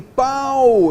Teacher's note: Olha, eu posso dizer então aqui que eu tenho pai, que é um ditongo decrescente oral. Por quê? A vogal A é oral